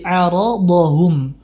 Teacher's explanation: jangan sampai ainnya terpengaruh ketebalan pada huruf ro